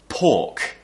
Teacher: we don't pronounce the r because after the r is a k which is a consonant sound